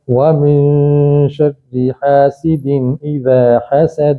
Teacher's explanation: ان سب کے آخر میں حرف قلقلہ ہے، قاف با دال، جس پر وقف ہو رہا ہے تو قلقلہ ہوگا